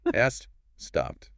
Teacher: ed just sounds like a quick T.